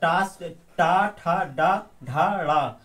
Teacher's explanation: ये सब मूर्धन्य मूर्धन्य से बोले जाने वाले वर्ण है